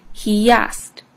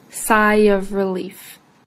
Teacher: the two words are linked with the yuh sound · linking words with yeah happens even if there isn't a y in the spelling